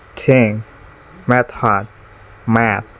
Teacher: Voiceless fricative.